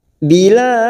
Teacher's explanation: Dan ini juga ada huruf dal yang mati di akhir kalimat, namanya qalqalah kubra. Bilad pantulkan kuat, namanya qalqalah kubra